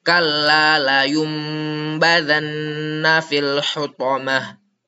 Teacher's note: Cara bacanya nun sukunnya dirubah menjadi mim sukun dan berdengung selama 2 harakat beserta menyamarkan mim tersebut. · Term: iqlab